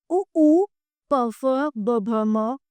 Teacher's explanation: ओष्ठ यानी होठों से बोले जाते हैं